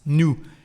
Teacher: And we understand why, because here we have a consonant, so there is no liaison, and we don't pronounce the final S